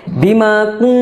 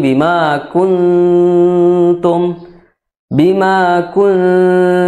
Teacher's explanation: ikhfanya ikhfa tarkik jadi tipis